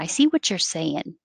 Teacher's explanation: Or the T can connect to the Y and make a ch sound.